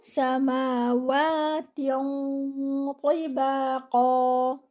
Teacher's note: keep your sin light with the whistling sound. Give it 1 count.